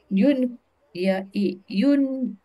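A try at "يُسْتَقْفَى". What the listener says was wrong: Ya'i, bukan yu'i, tapi ya'i.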